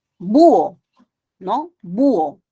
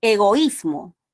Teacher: Y en el hiato acentual, ¿dónde está la fuerza de voz? En la cerrada, en la I y en la U